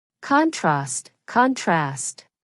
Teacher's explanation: In British English, the word contrast uses the short vowel a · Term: short British a sound